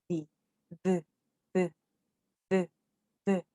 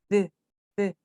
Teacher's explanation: Your tongue even has to go in between your teeth, but it produces a sound closer to D, the. Are you seeing my tongue?